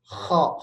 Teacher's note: Kalau kho, pangkal lidahnya itu naik dan dibuat gang kecil. Sehingga udara itu berasa pengen berdesakan keluar. Kho, rebutan dia mau keluar.